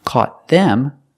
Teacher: the word is not stressed so you don't hear the th and again the t is a fast D